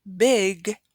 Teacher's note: when you produce the word big there is not so much air coming out of your mouth and this is what we call aspiration that is the pronunciation